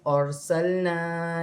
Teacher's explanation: را کو موٹا پڑھا جائے گا، را ساکن سے پہلے زبر ہے